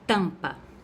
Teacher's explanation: o som do m não vai aparecer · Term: dígrafo